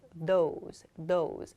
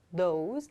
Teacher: the top of my tongue still begins against my upper teeth. I make an O sound. So I release my tongue from that position, those, and I make an O sound to follow it.